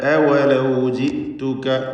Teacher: ഹംസ ശിദ്ദത്തോടെ ഉച്ചരിക്കാൻ ശ്രദ്ധിക്കുക.